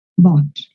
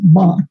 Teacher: O sea, este es como si yo fuera a decir una O, pero no digo una O. Dejo la boca muy abierta y se pronuncia más abajo en la garganta.